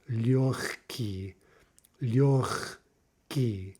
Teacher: Okay, so in the first two examples here, we had this happening in a cluster, right? We have a g followed by a ka. Ka is not voiced, so we have assimilation.